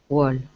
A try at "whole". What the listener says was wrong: Whole. Pretend the W is not there. It's just whole.